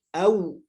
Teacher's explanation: Kalau waw kembali ke makhrajnya diakhiri dengan dimonyongkan dua bibir, au. Nah, gitu masuknya ke u gitu ya, ke vokal u. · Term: huruf lin